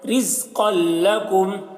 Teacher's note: را کو باریک پڑھ رہے ہیں, زیر ہے اس وجہ سے